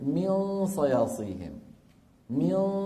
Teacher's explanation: هل نستعمل طرف اللسان كما كنا نستعمله في الإظهار؟ الجواب لا، بل نهيئه على مين؟ مخرج الحرف الآتي وهو الصاد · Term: إخفاء